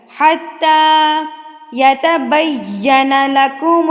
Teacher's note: کھڑی زبر کو آپ نے ایک حرکت کے برابر کھینچ کے پڑھنا ہے، یعنی کہ ایک انگلی کھولنے میں آپ کو جتنا ٹائم لگے گا اتنا ٹائم۔